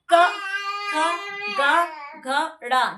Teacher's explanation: कंठ से निकलते हैं क ख ग घ ण।